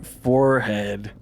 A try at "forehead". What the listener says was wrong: No, for head is 1 word. Forehead. it's syllables.